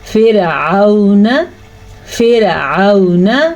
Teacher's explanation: فرعون، فرعون، حین کو واضح کریں، یہ لین ہے، واو لین، اس کو ہم قطعاً لمبا نہیں کر سکتے